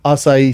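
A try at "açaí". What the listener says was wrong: Is it acai? acai. You're really pronouncing every letter.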